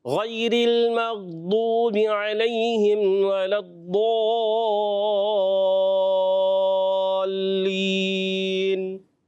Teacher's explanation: تھوڑا سا را کو اور باریک کریں